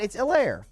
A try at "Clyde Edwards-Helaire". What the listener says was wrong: No, it's not. It's Helaire. First of all, you said Helaire. It's E. It's a long E, and the emphasis on the E, not the lair. It's Clyde Edwards-Helaire. not Helaire.